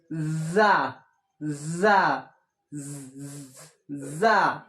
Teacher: যা উচ্চারণ হবে ঝিনঝিনা আওয়াজ হয়ে